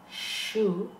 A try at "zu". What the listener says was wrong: No. Z. You said theta.